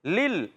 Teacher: بغیر غنہ کے ادغام کریں گے. لل، لام کو لام سے ملانا ہے، لام کو ہلانا نہیں ہے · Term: ادغام بلا غنہ